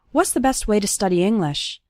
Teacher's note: the word to becomes ta, and it's just barely pronounced at the end of way.